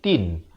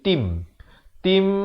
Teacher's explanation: Ta tanwin di bawah bunyi tin. Tapi bila datang mim dia dah tak bunyi tin dah. Dia bunyi tim. Tim. Terus masuk.